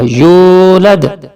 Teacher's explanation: ولم یولد، یہ واو حرف مدہ ہے، واو ساکن سے پہلے پیش ہے تو یہاں تھوڑا سا کھینچ کے پڑھا جائے گا، یولد.